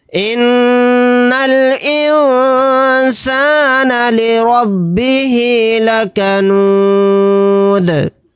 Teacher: یہاں پر دال کو ساکن بنا کر پڑھیں گے آیت کرنے کی صورت میں، اور دال ساکن ہوگا تو یہاں پر قلقلہ بھی ہوگا · یہاں پر نون ساکن کے بعد سین آ گیا تو یہاں پر اخفاء کا قاعدہ ہوگا، یعنی کہ سین اخفاء کے 15 حروف میں سے ایک حرف ہے، نون کی آواز کو ناک میں چھپا کر پڑھیں گے۔ را کے اوپر زبر ہے، را کو موٹا یعنی پر پڑھیں گے۔ · یہاں پر نون کے اوپر تشدید ہے تو یہاں پر غنہ کریں گے۔ یہاں پر نون ساکن کے بعد سین آ گیا تو یہاں پر اخفاء کا قاعدہ ہوگا، یعنی کہ سین اخفاء کے 15 حروف میں سے ایک حرف ہے، نون کی آواز کو ناک میں چھپا کر پڑھیں گے۔